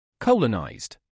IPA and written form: kɑlənajzd (Colonized)